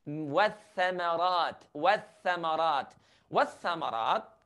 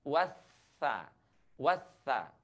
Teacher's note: Wathamarat kita ucapkan dengan cara menyentuhkan ujung lidah kita dengan gigi seri atas. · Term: huruf tha